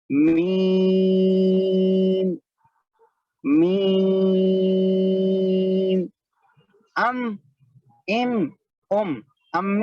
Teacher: میم جو ہے دونوں ہونٹوں کی خشکی سے ادا ہوتا ہے, دونوں ہونٹوں کی خشکی سے, یعنی دونوں ہونٹوں کا جو سوکھا حصہ ہے وہاں سے میم ادا ہوتا ہے.